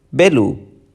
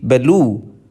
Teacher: it has stress on the first syllable, whereas the second example where you see belu, which has stress on the second syllable. All other stressed syllables can be said to have secondary stress, which is marked in the IPA with a lower tick mark before the onset of the stress syllable.